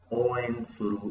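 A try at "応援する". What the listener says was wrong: O largo. Oen suru.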